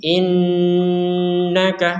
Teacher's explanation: ada Nun bertasydid ini kita dengungkan · Nah ini semuanya kita dengungkan untuk nun bertasydid.